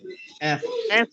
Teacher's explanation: আচ্ছা দাঁতের মধ্যে আরেকটা উচ্চারণ আছে, দাঁতের মধ্যে আরেকটা উচ্চারণ হলো এফ। একটু বাতাস বেরিয়ে যাও দুই পাশ দিয়ে, এফ। দাঁতের দাঁতটা ঠোঁটে লাগবে, নিচে ঠোঁটে, এফ। Fast fast এফ fast fast.